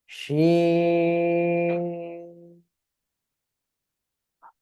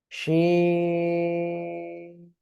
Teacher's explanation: ঠিক আছে, 3 আলিফ টান হবে, শিন। শাসা শব্দ করে অক্ষরটা উচ্চারণ করতে হবে